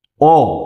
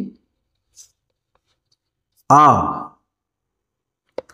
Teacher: এরপরে উচ্চারণ অনুসারে দেখুন তিন নম্বর হচ্ছে উচ্চারণ অনুসারে উচ্চারণ অনুসারে দেখুন তো আমরা বলছি অ তারপরে বলছি এবার ধরুন বলছি এবার এইটা লেখার বেলা আমি একটু ডট ডট ব্যবহার করছি কেন বলছি কেন করেছে আমি বলছি যখন বলছি অ যতটা সময় উচ্চারণ করছি আ তার থেকে বেশি সময় উচ্চারণ করছি